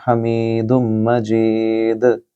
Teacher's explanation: یہاں دال حروف قلقلہ میں سے ہے، لہٰذا اس کی بھی گونجتی ہوئی آواز ہوگی۔ حمید مجید، یعنی کہ آپ نے قلقلہ کرنا ہے۔